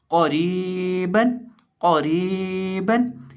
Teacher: अब यहाँ हम क़ाफ को मोटा करके पढ़ेंगे और रॉ को बरीक पढ़ेंगे क्योंकि रॉ के नीचे देर है और इसको एक अलिफ के बराबर लंबा भी करेंगे क्योंकि इसके साथ याई मद्दा है और आगे बा के ऊपर सिंपल 2 ज़बर।